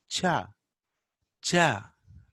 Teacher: So while we are pronouncing cha, ja, what is happening? We are stopping the airflow completely and then releasing slowly with friction. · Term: affricates